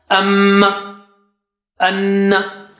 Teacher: you have to stretch it twice with your nose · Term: gunna